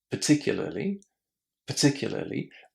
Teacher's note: pay attention that the first syllable is super short just as in surprise.